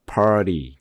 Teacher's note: 첫 번째에다 강조를 했기 때문에 두 번째는 그냥 중성모음 그 단계까지 소리가 내려오는 거예요.